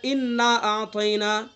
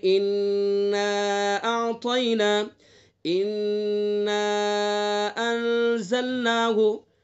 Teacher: تو جہاں بھی نون کے اوپر تشدید ہوگی تو وہاں غنہ کریں گے. ایک الف کے برابر ناک میں آواز کو گنگنائیں گے تب آگے چلیں گے.